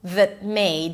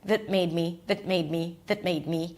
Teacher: The a is reduced. That made. So you connect those two together.